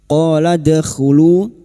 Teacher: alif dua harakat kita panjangkan mad thobi'i · qaf fathah diikuti alif, dua harokat kita panjangkan matabi'i. Qala dakhulu, dal sukun yang mati asli di tengah kalimat qalqala sughra, jangan lupa dipantulkan.